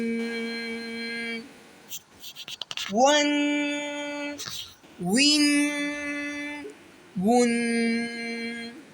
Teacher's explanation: واو کو ہونٹوں کو گول کر کے ادا کریں گے اور واو کا مد بھی کھینچ کے پڑھیں گے